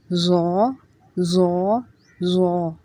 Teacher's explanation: ضا میں سیٹی کی آواز نہیں آئے گی